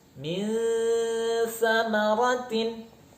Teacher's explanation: Misal, nun mati atau tanwin bertemu dengan huruf sa. Huruf sa itu pertemuan antara ujung lidah dengan ujung gigi seri atas, sehingga arah dengungnya harus ke sana. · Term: ikhfa hakiki